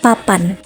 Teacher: P memiliki ciri mati oral bilabial dan plosif